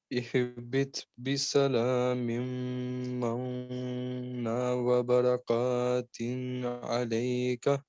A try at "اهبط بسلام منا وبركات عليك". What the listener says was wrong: بسلام مم، یہ نون نہیں پڑھا جائے گا، سیدھا مم من مم مم نون پہ بات رکنی ہے یہ والے پہ نا. بسلام منا لمبا ہوگا نا وبرکات نا لمبا ہونا ہے، ٹھیک ہے.